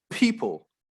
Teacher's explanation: if you say the word with the b phoneme, the b, you'll see there's not much movement of the paper